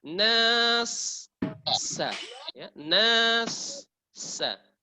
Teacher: sukunkan dengan jelas sin di belakang. Jangan setengahnya